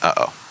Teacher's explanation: There's a stop in the middle of this word, just like in uh-oh.